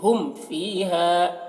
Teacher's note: میم کو ظاہر کر کے پڑھ رہے ہیں اور اس میں دیر نہیں کر رہے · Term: اظہار شفوی